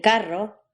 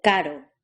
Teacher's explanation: This letter is pronounced in 2 possible ways. R, the R trill, as in carro, and D, the R tap, as in caro. You'll pronounce the R as a trill in just a few contexts.